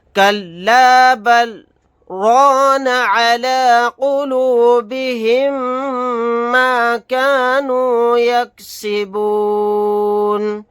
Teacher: یہاں پر سکتہ کریں گے یعنی کہ سانس نہ ٹوٹنے پائے لیکن آواز کو روکیں گے